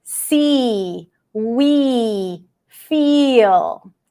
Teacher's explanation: if we roll the tongue all the way forward, we get to the high E sound, as in see.